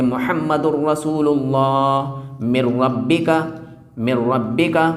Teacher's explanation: یہ تنوین ہے اور اس کے بعد را آ گیا تو را کے کیس میں ہم اس کو غنہ نہیں ہونے دیں گے، تو بغیر غنہ کے پڑھیں گے